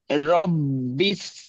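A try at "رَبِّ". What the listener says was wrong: বিস না রব্বি রব্বি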